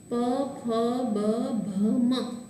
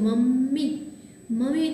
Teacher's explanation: મ છે એના ઉચ્ચારણ વખતે તમારા બે હોઠ એકબીજાને સ્પર્શે છે. એટલે જ્યારે મનું ઉચ્ચારણ આપણે કરીએ છીએ તો આપણા હોઠ છે એકબીજાને સ્પર્શતા હોવાથી જ એને ઓષ્ઠ્ય અનુનાસિક કીધો છે.